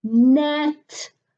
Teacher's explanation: Okay, and show them with your mouth where the tongue is up behind the upper teeth to make the n sound